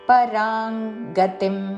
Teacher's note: పరాంగ అనుస్వారము కావర్గములోని అనునాసిక అంగోచ్చారణ